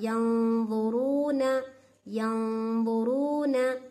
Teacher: अब क्या करना है मुझे, नून की आवाज को नाक में छुपाना है, कैसे, मोटा गुन्ना करना, इसमें बारीक नहीं। यं वा को ज़ा के करीब ले को भी चल जाना मेरी जबान को, और क्या है, मोटा भी पढ़ना, ठीक है ना।